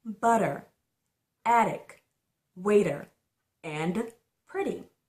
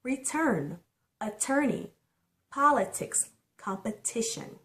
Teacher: change the pronunciation of the letter t into a soft d the letter t between two vowels have a sound of a soft d